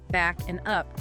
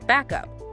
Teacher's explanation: the final consonant sound of back that K sound, it links seamlessly onto the starting vowel sound of up. The air just flows continuously. Ah, you don't get that tiny pause you might make if you were speaking very very deliberately.